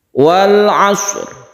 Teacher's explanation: Maka ketika kita mematikan atau memberi sukun shad, kita juga memberi sukun ra, sehingga huruf ra-nya tersebut masih kelihatan, masih terdengar. Walaupun kita itu tidak memberikan tekanan yang kuat, akan tetapi ra ini harus ada, entah itu setengah ataupun sepertiga dari huruf ra, suaranya itu harus ada.